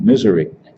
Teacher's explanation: the name of the state wrong as a matter of fact putting the accent on the first syllable instead of the second one